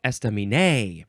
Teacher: those first three syllables, none of them get emphasized more than the others